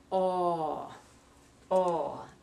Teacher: It's a long one, and that's pronounced in the back of your mouth. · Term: aw sound